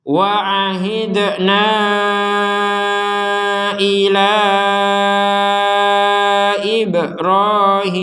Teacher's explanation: dipanjangkan 4 sampai 5 harakat ketika panjangnya na digabung dengan Hamzah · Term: harakat bendera, harokat bendera